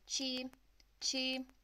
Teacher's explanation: you're going to apply the first flat tone